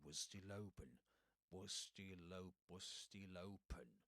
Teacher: Only one sound pronounced in between was and still.